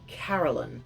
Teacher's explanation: saying it i'm saying caroline so it sounds like ca orlean the r seems to be hidden underneath an invisible h